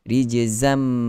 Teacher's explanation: Nampak tak kita rapat terus bibir sebab masuk totally dalam mim. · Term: idgham kamil